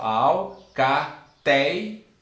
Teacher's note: nós temos que a penúltima sílaba é mais forte. E se a penúltima sílaba aqui ela é mais forte, ela é paroxítona.